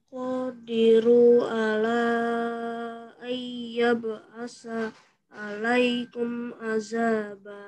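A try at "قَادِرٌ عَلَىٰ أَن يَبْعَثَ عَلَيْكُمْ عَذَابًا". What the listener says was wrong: Langsung ayyab'asa alaikum. Jangan diputus.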